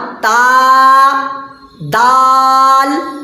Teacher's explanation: زبان کی نوک اور اوپر کے سامنے والے دونوں دانت کی جڑ سے مل کر تا دال تو نکلتا ہے. تا دال تو کا مخرج زبان کی نوک اور اوپر کے سامنے والے دونوں دانت کی جڑ.